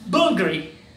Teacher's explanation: it is pronounced as Bul. Very little sound of L.